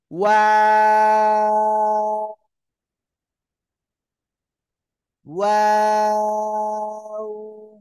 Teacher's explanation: শুরুতেও গোল হবে, আবার শেষে আবার কি গোল হবে আবার। শুরুতে গোল, মাঝখানে দুই দিকে প্রসারিত হবে, আবার শেষে গোল হবে।